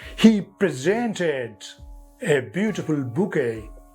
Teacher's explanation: Verb has accent on the second syllable.